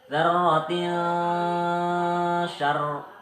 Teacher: samar dengan dengung dan ditahan selama 3 harokat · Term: ikhfa